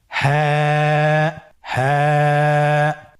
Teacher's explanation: হাফটি উচ্চারণের স্থান কন্ঠনালীর শুরু হতে অথবা আমরা যদি আরবিতে বলি হলকের শুরু হতে এটা এই হরফটি উচ্চারিত হয়।